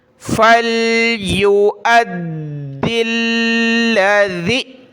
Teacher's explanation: دال اور لام دونوں کے اوپر تشدید، دونوں کو سخت کرنا ہے